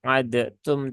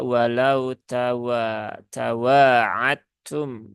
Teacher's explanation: Ya, di sini harus dibaca dengan idgham, maka dalnya dan ini peleburannya dia sempurna ya. Peleburannya kamil, maka ini cara paling gampangnya hilangkan saja huruf dalnya. Nah, kemudian terbaca walau tawa'atum ya. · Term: idgham mutajanisain